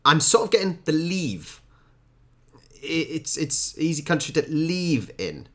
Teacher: It seems like the I has become an E and the E has become an I.